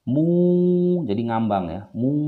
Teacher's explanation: Jadi suara mung tidak, suara mun tidak, tetapi dia ngambang. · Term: ikhfa ausat